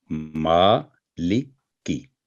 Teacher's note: ما کی آواز لمبی ہوگی 2 سیکنڈ، اور لی 1 سیکنڈ، اور کی 1 سیکنڈ، مالکی۔ تو یہ اس کا صحیح تلفظ ہے۔